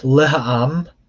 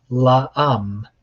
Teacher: However, what happens more often is that the ha gets absorbed by the preposition that it comes before it. So instead of laha'am, you get la'am.